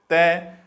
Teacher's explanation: तो तय का उच्चारण स्थान दंत यानी दांत, तय उच्चारण करते हैं तो जीवा हमारी दांत से टकराती है।